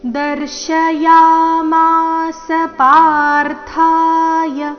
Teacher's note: ಚರಣದ ಕೊನೆಗೆ ಯ ರಸ್ವ ಬರಬೇಕು